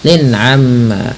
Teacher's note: Jelas suara tanwinnya karena dia izhar halqi.